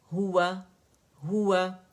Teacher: نہ ہو کو اسٹریچ کرنا ہے زیادہ کہ وہ مد بنے، نہ واو کو کرنا ہے، ٹھیک ہے، کہ وہ الف مدہ بنے.